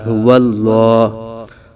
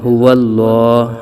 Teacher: اللہ عز و جل کے لام سے پہلے زبر آ رہا ہے تو اس لیے لام کو پر پڑھا جائے گا